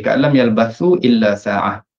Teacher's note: Kemudian ada hukum mad munfasil pada ayat 45 tadi, Ka'lam yalbathu illa sa'ah, dibaca dengan dua harakat, dua harakat.